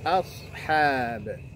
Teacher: ya, ashab. Perhatikan di situ hamzahnya tipis, a, shadnya yang tebal